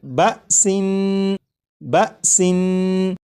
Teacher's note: اس لفظ کو جب آپ نے پڑھا جیسے بسن، تو سین کو پڑھتے ہوئے آخر میں جو نون ہے، نون کی ادائیگی کرتے وقت آپ نے غور کیا ہوگا کہ زبان تالو سے لگی